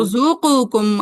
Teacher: قاف اور کاف کا ادغام ہو رہا ہے